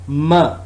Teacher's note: it's voiced bilabial nasal sound.